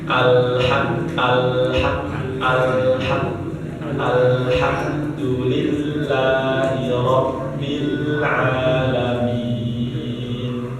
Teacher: Jadi lam ketika ucapin terutama di sukun, lam yang sukun, lam yang mati itu ya tadi nggak boleh suaranya terputus ya. Kemudian nggak boleh mantul.